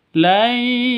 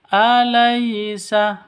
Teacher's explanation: Sifat lin lentur lemas. Tidak boleh disentak tidak boleh didengungkan, tidak boleh dipanjangkan.